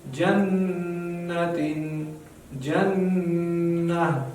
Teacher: نون مشدد ده یعنی شد پرې راغلی نو دلته به هم نون سره مونږ یو بل اواز په خپله جوړېږي چې پزې نه راوځي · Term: غنه